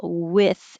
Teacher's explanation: this is I not e but I a little bit lower